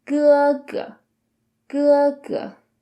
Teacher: the second good is the neutral tone so it's softer and without an emphasis